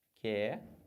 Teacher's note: Perceberam que quando eu faço a transcrição fonética, esse QU, o U não tem som? Então acaba que eu fico com duas letras e um som só.